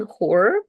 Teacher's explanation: when people say like a horror movie they pronounce this H stronger compared to the words like home or he. And that one uh when it's pronounced stronger it's closer to the Russian uh letter h.